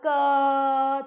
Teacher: आपने बोला क तो आप देख रहे हैं बाद में अ की ध्वनि आ रही है और अ है स्वर। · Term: व्यंजन